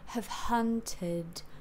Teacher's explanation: The back is not bunched up. And then hunted, the syllable hun, is also a central vowel. So the tongue will be flat and central. Ha. Drop the jaw, but like enough so that it's comfortable to breathe out, but don't pull the tongue forward, yeah?